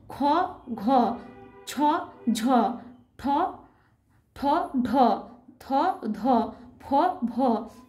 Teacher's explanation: এইগুলি উচ্চারণ করলে দেখব মুখ থেকে একটু বেশি বাতাস জোরে বেরিয়ে আসছে, যেটা হাতে স্পর্শ পাচ্ছি। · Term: মহাপ্রাণ বর্ণ